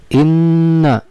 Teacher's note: ketika dibaca harus keluar dengung antara dua sampai dengan tiga harokat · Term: guna